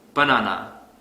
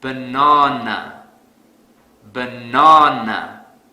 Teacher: because I don't stress the second syllable so to fix this I will stress the second syllable really hard